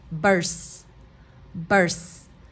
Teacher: you could say burst but it's a stop T